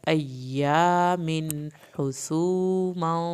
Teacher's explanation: حسوماں پہ اخفا ہوگا، دیر لگے گی ایک الف کے برابر۔